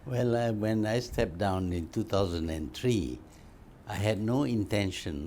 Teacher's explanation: malay english goes up and down up and down up and down a lot more than what we hear with canadian or north american or british english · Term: intonation